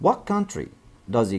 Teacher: زي pronoun he مش بننطق الH بننطق بس الE اللي موجودة فيه